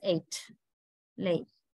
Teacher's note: It moves to a glide at the end of the sound. Glide means a kind of changing from one position to another position.